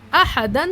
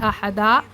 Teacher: 2 زبر پر وقف کرنا ہو تو ایک زبر کے ساتھ الف پڑھا جاتا ہے، جیسے احدن سے احدا۔